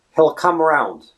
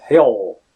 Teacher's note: So again, it's a typical dark L sound. He'll, it's almost like that.